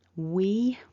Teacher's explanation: the full form we with the long e